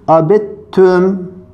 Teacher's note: Burada T'yi okumuyoruz, deli şeddi olarak okuyoruz. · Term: idgam mütecanisein